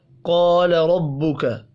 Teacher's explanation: الف مدہ کو ایک الف کے برابر کھینچ کر پڑھنا ہے